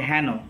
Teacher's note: হবে বিবৃত মানে যখন আমাদের মুখের ফাঁকটা বড় হবে তাহলে হ্যান আমরা যখন হ্যান বলছি তখন আমাদের মুখের ফাঁকটা বড় হচ্ছে